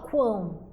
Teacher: Aqui o quão, observem que o U aqui produz som, quão, tá? A gente não fala cão, a gente fala quão, certo? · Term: tritongo